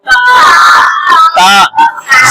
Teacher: ता का मखरज जबान की नोक, हाँ, और सनाया उलिया की जड़। और दूसरे लफ्ज़ों में बोलेंगे जबान की नोक और ऊपर वाले दांतों की जड़।